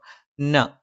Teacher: നാവിന്റെ അറ്റം മേലെ മുൻപല്ലിന്റെ മോണയിലാണ്